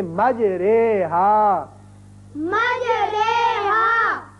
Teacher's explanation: اب قرآن پاک میں ایک ایسا لفظ ہے، اصل میں یہ ہے مجراہا، اور یہاں امالے کا قاعدہ یہ ہے کہ ہم زبر کو زیر کی طرف مائل کر کے پڑھیں گے. جیسے اردو میں ہم قطرے یا سویرے، جو رے کے نیچے زیر لگ کے آواز نکلتی ہے یہاں وہ نکلے گی. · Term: امالہ